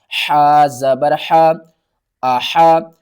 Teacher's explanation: حا کو آپ نے حلق کے درمیان والے حصے سے ادا کرنا ہے، حا کی آواز باریک ہے۔